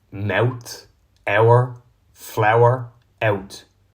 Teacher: The diphthong in words like mouth is pronounced ew in Dublin.